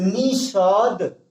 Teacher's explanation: लेकिन जब हम बोलते हैं तो निषाद यानी जो मुख मूर्धन्य वाला सा का प्रयोग होता है, क्योंकि हमारी जो जीभ है दंत से स्पर्श नहीं करती है, इसलिए इस सा का प्रयोग ना करके हम जो है मूर्धन्य सा का प्रयोग करेंगे